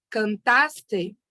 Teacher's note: Então, a sílaba mais forte é a do meio, seria a penúltima sílaba tônica, e nós chamamos esta classe de palavras de graves.